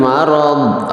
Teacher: ra berharokat fathah itu adalah tafhim